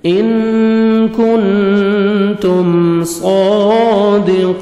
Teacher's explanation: ساکن کے اظہار ہے، جلدی پڑھیں گے، ان کنتم صادقین، صاد کو موٹا کر کے پڑھیں گے، 1 سیکنڈ کھینچیں گے ، کھڑا زبر ہے، قاف کو موٹا کر کے پڑھیں گے